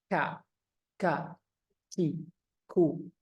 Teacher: dia sifatnya hams nafas mengalir ka ka ki ku jadi ka ka bisa dirasakan napasnya keluar · Kaf ini mirip seperti kof, tapi agak di depan dia. Dia sifatnya hams. Nafas mengalir. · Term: huruf kaf